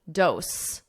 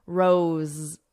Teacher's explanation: So you hear a Z, a buzzing, because it's a voiced sound